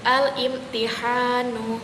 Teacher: ujung lidah menempel pada langit-langit yaitu huruf nun